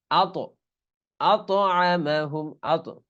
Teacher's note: এই কফ ত বা জিম দাল আমরা পড়েছি কলকলার হরফ, এই ততে হালকা লাফিয়ে উঠবে